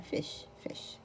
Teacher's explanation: الاي شورت مش لونج ما نقول فايش لا فيش فيش شورت قصيره.